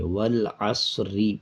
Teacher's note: جب ہم اس کو اکٹھا پڑھتے جائیں گے، یعنی آیت کو جب آیت پہ روکیں گے نہیں، وقف نہیں کریں گے، تب را کو باریک پڑھیں گے